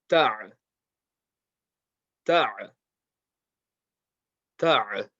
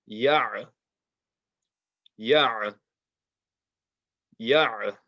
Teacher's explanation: Now we come to the ayn, middle of the throat.